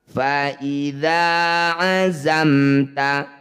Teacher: Ini disebut bacaan izhar syafawi. Cara bacanya bunyi mim sukun baca jelas, rapatkan bibir, tidak usah dengung.